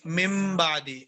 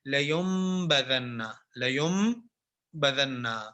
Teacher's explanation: تو اب ہم اس نون کو میم سے بدل دیں گے اور میم کی ادائیگی کے ساتھ اس کو پڑھیں گے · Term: اقلاب